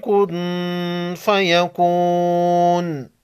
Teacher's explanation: نون ساکن پر اخفائی حقیقی ہوگا، اس کے بعد حروف اخفا میں سے فا ہے